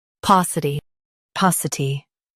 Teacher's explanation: Stress pau and keep ci soft.